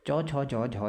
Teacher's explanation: उच्चारण जीभ के मध्य भाग से होता है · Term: तालव्य व्यंजन